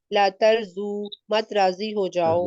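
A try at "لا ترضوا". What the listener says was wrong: یہ زو نہیں ہے، زال کے اوپر داد کے اوپر زبر ہے، یہ دو بنے گا نا؟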